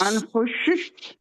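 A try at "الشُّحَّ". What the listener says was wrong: शुश नहीं होगा, सुश शुह शुह, क्योंकि हा जो है आखिर में उसके ऊपर जज्म लगनी है, और फिर थोड़ी सी हार्ड वे, क्योंकि दो हा है ना उसमें।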